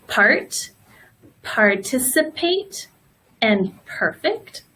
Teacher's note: note ah Oh the next one we have is PE and you pronounce the P just like you do in Spanish the two lips together